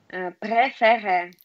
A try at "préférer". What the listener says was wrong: Еще закрыть, а то звучит, я слышу вместо и. Préféré. Première. Как раз в первом не читается, во втором читается, да? Première.